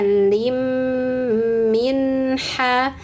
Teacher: idgham kasrah tain bertemu huruf mim, maka tanwinnya hilang masuk ke mim sehingga bunyinya lim min ha